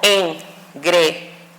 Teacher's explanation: vocales que pudieran estar unidas, pero suena fuerte en la I